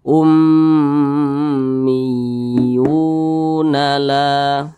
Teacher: Nah, sesuai dengan rumus mad tabi'i yang di kotak warna kuning, maka huruf iya ini dia dibaca panjang karena berbaris dhammah dan posisinya berada di belakang huruf wa yang sukun. Ini namanya mad tabi'i, panjangnya 2 harakat atau kira-kira 2 ketukan.